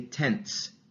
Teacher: our tongue can all remain in the alveolar region because that T stop is also an alveolar sound